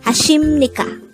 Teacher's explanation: But in Korea, they pronounce it as 하십니까. Not a P, but an M sound.